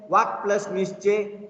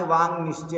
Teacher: मग या क चा लोप होतो आणि त्याच वर्गातील अनुनासिक व्यंजन येतं अंग. इथं पा अंग आलं आणि वांग निश्चय असा संधी झाला.